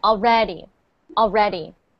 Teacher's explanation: we put the stress not on all, but red